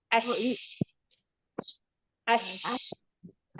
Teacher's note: Karena si lidah kita naik nih mendekat ke langit-langit. Si tengah lidah kita naik menuju ke langit-langit, otomatis celah antara lidah dan langit-langit itu menjadi sempit. Nah, itu yang membuat udaranya jadi nggak lancar ya, makanya memancar. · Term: shin